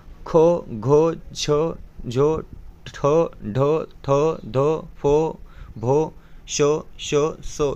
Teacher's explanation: या वर्णातील ह प्रमाणे मोठ्या प्रमाणात वायू बाहेर पडते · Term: महाप्राण